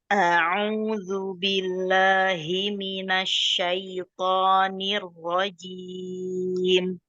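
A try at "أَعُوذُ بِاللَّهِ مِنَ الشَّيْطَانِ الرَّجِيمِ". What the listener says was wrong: iya, keluarkan huruf mad dari al-jauf, bukan dari rongga hidung ya.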